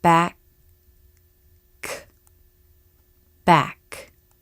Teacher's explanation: part of the tongue reaches up to touch the soft palate i'm going to slow down the k sound in the word back see if you can hear the stop of air before the release · sound first a stop in the airflow and second a release we stop the flow of air here closing our vocal cords while the back part of the tongue reaches up to touch the soft palate · The back of the tongue reaches up to touch the soft palate, which is closed. The tip of the tongue can remain forward, lightly touching the back of the bottom front teeth.